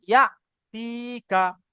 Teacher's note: ইয়া, হামজা জবর ইয়া, হামজার উপরে সাকিন এসছে, সাকিনওয়ালা হামজাকে একটু ঝাটকা দিয়ে পড়তে হবে।